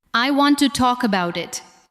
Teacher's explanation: Listen to how to and the first part of about become lighter.